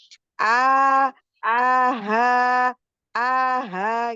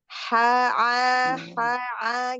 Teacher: kalau ha besar itu di pangkal tenggorokan ya, jadi area dekat pita suara dia dengan satu makhraj dengan hamzah